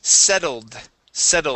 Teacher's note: with the Ed ending we need only that D instead of saying setted